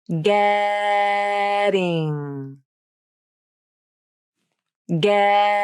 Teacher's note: the T turns into the flap because the T comes between vowels and the second vowel is unstressed · Feel how quickly the tongue tip flaps against the roof of the mouth.